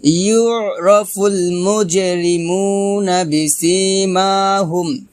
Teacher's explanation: এক লিপটান হবে বিসিমাহুম মা এক লিপটান হবে বিসিমাহুম ইউ এখানে আইন চাপ দিতে হবে গলার মাঝখান থেকে আইনটা উচ্চারণ করতে হবে